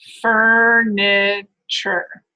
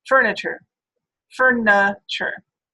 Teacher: But in more rapid search, rapid speech rather, you're probably going to say something more like furniture, furniture, right? You're going to say a schwa vowel instead of that I when you're speaking faster. All right, and that's called reduction.